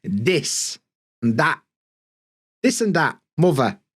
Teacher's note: we do th fronting and th stopping